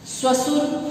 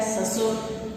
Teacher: जो तालव्य श है वो किसमें बदल गया है, दंती स में बदल गया है।